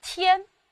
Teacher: 它的韵母是前鼻韵母安